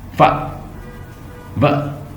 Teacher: The lower lips approaches और touches the upper teeth as in the sound फ व, ये लिब्योडेंटल है।